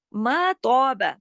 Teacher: ما کو باریک پڑھنا ہے لیکن تو کو موٹا پڑھنا ہے کیونکہ تو موٹے حروف میں سے.